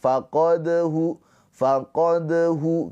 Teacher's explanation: Cara bacanya qalqalah sugra dipantulkan tapi sambil mengalir sambil berjalan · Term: qalqalah sughra